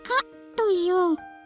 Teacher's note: 喉の奥を閉じて発音しよう